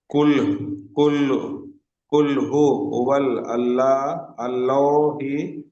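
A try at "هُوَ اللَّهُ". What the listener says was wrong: আল্লাহ হবে না, আল্লাহ হবে না, ওয়াওটি ওয়াও এর যাবার এসছে, তাহলে ওয়াওটি লামের সঙ্গে যুক্ত হবে, তাহলে ওয়াও লাম যাবার ওয়াল হচ্ছে, তাহলে আল হবে না। হুয়াল, কুল হু ওয়াল্লাহু আহাদ।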